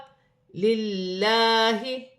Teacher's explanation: لام باریک پڑھی جائے گی، لام سے پہلے زیر آ رہی ہے